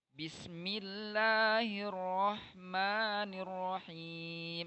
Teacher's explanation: Jangan terlalu nirrahim, jangan terlalu bergetar ro-nya. · Ro-nya jangan terlalu tebal ketika baca basmalah.